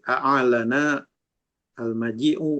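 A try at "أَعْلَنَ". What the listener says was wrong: Ainnya dia sukun. Mati ya. Sukun ainnya.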